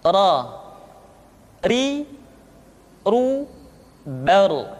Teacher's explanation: Diucapkan dengan menyentuhkan punggung lidah dengan langit-langit.